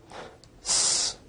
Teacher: S is a voiceless alveolar fricative